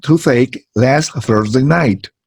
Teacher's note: it's an interdental consonant because the tip of the tongue has to be between the upper and lower teeth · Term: voiceless interdental fricative consonant